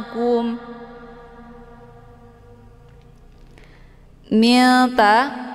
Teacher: cara bacanya nunnya disamarkan kemudian siap-siap mau baca huru ta ya Jadi bukan Min jelas bunyi nnya itu bacaan yang salah